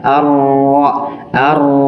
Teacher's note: Huruf ro dibaca dengan ada sifatrar atau getaran. Tapi getarannya hanya di awal, tidak berlebihan, tidak terlalu banyak ya.